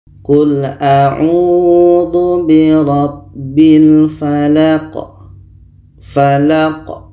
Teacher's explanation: La ini pendek dan qa ini dimatikan. Qa mati hukumnya adalah qalqalah. Qalqalah kubra, ada pantulan.